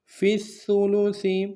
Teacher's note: شرکاء فی الثلث، فا کو آگے سا کے ساتھ ملانا ہے، سا کو باریک ادا کریں گے، سا کے اوپر تشدید زور دیں گے۔